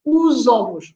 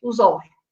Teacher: But when even when there are two different words like os, ovos, but because we link the sounds, the OS links with the O from ovos, and then it's the S between two vowels. So the sound is the same like a Z.